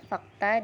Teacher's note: Bunyi kelima yaitu F, konsonan labiodental geseran tak bersuara